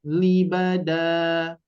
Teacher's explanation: ketika diwakafkan maka Mad iwad ini dibaca dua harakat